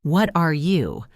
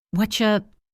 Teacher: Did you hear the reduction? I didn't say, what are you? I said, whatcha